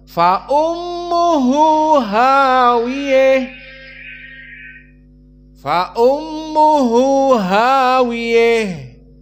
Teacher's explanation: Membaca ha at-ta'nis dengan al-imalah al-kubra, spesifik qiraah al-Kisai al-Kufi.